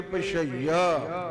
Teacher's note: ਇਹ ਜੋ ਅਧਿਕ ਲੱਗੀ ਹੈ, ਇਹਨੇ य ਦੀ ਆਵਾਜ਼ ਦੋਹਰੀ ਕਰਕੇ ਪਛਈਆ ਇਦਾਂ ਉਚਾਰਨ ਕਰ ਦੇਣਾ ਹੈ